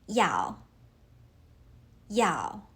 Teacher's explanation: Yào uses the fourth tone. Starts high and drop sharply.